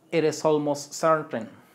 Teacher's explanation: Cuando repetimos todo junto, cuando pronunciamos is almost certain, como que no alcanza a sonar la t.